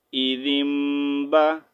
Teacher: غنّے کے ساتھ، غنّہ اور اخفا کے ساتھ یہاں پر میم کو پڑھیں گے، ٹھیک ہے۔ غنّہ کریں گے، اخفا کریں گے، لیکن یہاں پر نون نہیں ریڈ کریں گے، ٹھیک ہے۔